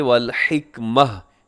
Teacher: وَالْحِكْمَةَ لکھا ہوا ہے، وقف کریں گے تو یہاں پہ وَالْحِكْمَةَ، تا کو ہا سے بدل کے ہا ساکن کر کے پڑھیں گے